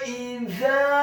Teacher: Kata idza, huruf alifnya dibaca tipis, kasrah 1 harokat, huruf za-nya dibaca tipis, tarqiq, lidahnya agak keluar sedikit, fathah 2 harokat karena setelahnya ada alif